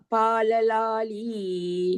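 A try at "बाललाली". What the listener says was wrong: Balalali only. It is not pala. Here ba. Balalali.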